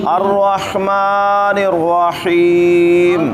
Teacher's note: الرحمن کا ہا اور الرحیم کا ہا حلق کے وسط سے ادا کرنا ہے